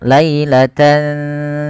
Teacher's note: Maaf ke huruf tsa yaitu cara membacanya tan awalnya lailatan ketemu sa tidak jelaskan suara n-nya tidak jelaskan suara nunnya tidak dibaca lailatan tsumma tapi disamarkan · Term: ikhfa